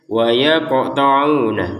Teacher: Ada qaf sukun di sini. Qaf sukun ini harus kita pantulkan ya.